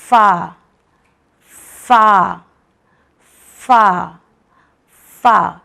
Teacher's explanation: ये वो लेटर है जो ऊपर के 2 दांत हमारे लिप के गीले पार्ट से निकलते हैं। फा, नमी या होठ के नमी से निकलेंगे।